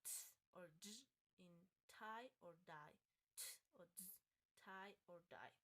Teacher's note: Alveolar consonants, these are produced when the tip of the tongue make a contact with the alveolar ridge